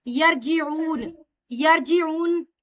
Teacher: जीम मुतहर्रक नहीं है इसलिए यहाँ पर कलकला नहीं होगा।